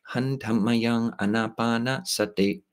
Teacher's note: But to pronounce Pali in Thai, just based on the tones of Thai, it's pronounced with tones in, when one is chanting, a Thai person is chanting Pali, it comes out tonal.